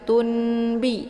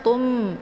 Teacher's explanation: bacanya itu Ditekan kemudian ditahan karena ini wajib dibaca dengung ya ditekan kemudian ditahan suaranya dua harakat · atau tanwin ke dalam bunyi mimbi Jadi bukan tunbi ya karena tanwinnya itu harokat tanwin sudah dibalikkan ke dalam bunyi mim jadi otomatis keluarnya Tum ya jadi cara bacanya itu Ditekan kemudian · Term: iqlab